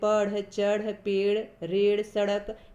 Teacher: इनके उच्चारण में जीभ को ऊपर उठाकर आगे की ओर फेंका जाता है यानी उत्क्षिप्त किया जाता है उत्क्षिप्त का अर्थ होता है फेंकना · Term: उत्क्षिप्त ध्वनियां